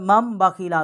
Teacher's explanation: پر مم بخیلا کیونکہ یہاں پر چھوٹی میم ہے اس لیے نون جو ہے یہ نہیں پڑھی گئی، یہ 2 میمیں جو ہیں وہ پڑھی گئی ہیں